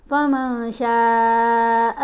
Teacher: نون کی آواز کو ناک میں چھپا کر پڑھنا ہے، اس کو واضح کر کے نہیں پڑھنا